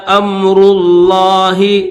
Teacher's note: لفظ اللہ کو موٹا کریں گے